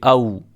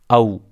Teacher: कंठ से शुरू होके ओष्ठ तक ध्वनि आएगी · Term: कंठोष्ठ